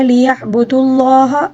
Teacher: عین کو حلق کے درمیانی حصے سے ادا کریں گے اور لفظ اللہ کو پر پڑھیں گے کیونکہ اس سے پہلے پیش آیا ہے، ٹھیک ہے۔